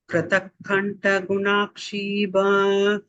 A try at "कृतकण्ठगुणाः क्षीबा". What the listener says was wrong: You have to say the Visarga here.